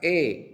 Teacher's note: Kita tahu posisi E, bibir kita tidak bulat lagi, agak melebar ke samping. E, ya, akan ditarik bibir ke belakang. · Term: vokal E